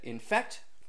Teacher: infect which is unstressed stressed